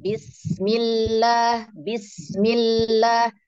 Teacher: Sin sukunnya dialirkan dulu Bun bismillah bismillah Sin sukun alirkan lam tasdid tunaikan Bismillahirrahmanirrahim nah lanjut